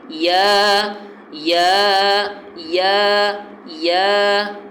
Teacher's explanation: اس کا جو مخرج ہے وہ جوف دہن ہے، یعنی منہ کے اندر کا خالی حصہ۔ اس سے جیسے الف ادا ہوتا ہے اسی طریقے سے یا بھی ادا ہوگا، یا یا یا یا۔